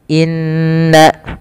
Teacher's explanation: inna ditahan suara bunyi n-nya sepanjang 2 harakat karena ia bacaan gunnah. Beberapa kesalahan yang terjadi tidak menahan gunnahnya, hanya lewat saja.